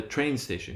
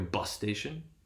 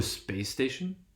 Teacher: So that is what we might call sort of the normal stress pattern for compounds, or the basic stress pattern, meaning the primary stress is applied to the first element and secondary stress to the second element